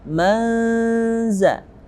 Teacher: nun sukun bertemu dengan zain masuk dalam hukum nun sukun dan tanwin, yakni ikhfa haqiqi, samar-samar.